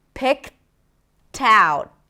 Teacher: Then it's the laxed I, P, and then kt, kt, kt. We want to connect the k to the t, right?